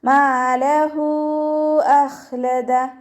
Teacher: മീമിൻ്റെ കൂടെ അലിഫ് മദ് വന്നിട്ടുണ്ട്, അപ്പോൾ 2 കൗണ്ട് നീട്ടുക